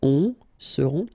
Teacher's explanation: final T not pronounced, and then you've got this nasal, on, seront, elles seront.